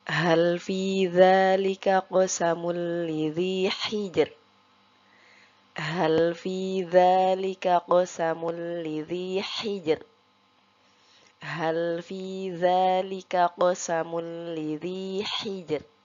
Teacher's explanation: untuk huruf ro-nya kita baca tipis karena sebelum huruf ro sukun terdapat huruf yang berharokat sukun yaitu jim dan huruf sebelumnya itu berharokat kasroh. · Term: tipis atau tarqiq